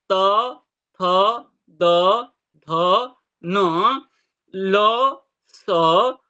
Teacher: दांत को स्पर्श होकर निकलने के कारण इसका स्थान दंत स्थान बताया गया है